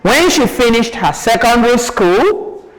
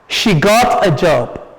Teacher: So you have a non-final intonation in this sentence. When she finished her secondary school, rising tone. She got a job, falling tone.